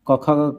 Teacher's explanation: क ख ग का उच्चारण स्थान कंठ होता है।